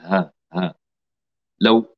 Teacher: لو أغلقنا الوترين الصوتيين أصبحت الهاء همزة، لكن ينفتح قليلا، ينفتح جزئيا فتخرج الهاء · أما الهاء فتخرج بانفتاح الوترين الصوتيين انفتاحا جزئيا